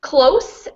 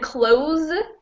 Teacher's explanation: close as in near is with an s and close as in shut is with a z sound